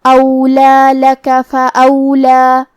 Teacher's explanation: کلمت فاولا آخری میں یہاں کھڑا زبر ہے، لہذا 2 مد کے برابر ہم اپنی آواز لمبی کریں گے